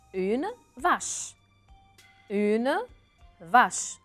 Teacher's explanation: À la fin, le E, je ne le prononce pas